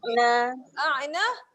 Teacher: A'na kat sini kena tekan di tengah kerongkong. Yang salahnya bunyi a'na.